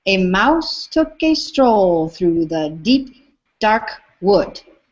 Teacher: That dark wood, for me, they're both stressed, and it's a spondee.